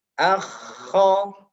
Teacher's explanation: Makhrajnya atau sumber suaranya adalah di tenggorokan bagian atas di sini. Lebih tepatnya di akarnya lidah. Akho, ada ngoroknya bahasanya.